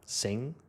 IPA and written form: sɪŋ (sing)